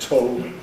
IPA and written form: toʊ (tow)